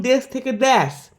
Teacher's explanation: উচ্চ অর্ধ সংবৃত্ত সম্মুখ স্বরধ্বনি এ বাঙালিতে নিম্নমধ্য অর্ধবিবৃত সম্মুখ স্বরধ্বনি এ রূপে উচ্চারিত হয়